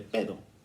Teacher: nuestro niño que de antemano sabemos que sustituye el fonema r por la d